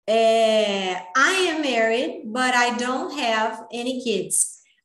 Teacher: Aqui, a regra é o T entre o som de vogal. Então, o T, ele ganha a pronúncia do R